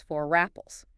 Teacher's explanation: You glide right over the boundary between the words.